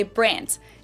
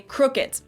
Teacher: Germans usually pronounce a D at the end of a word as a T